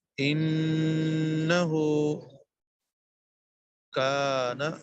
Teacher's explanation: کاف باریک ہے کشمیر والا کتاب والا کاف ہے باریک